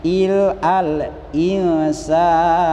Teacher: Apabila nun sukun bertemu dengan huruf sin, maka dibacanya harus disamarkan. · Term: ikhfa